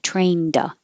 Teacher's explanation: the d connects to the a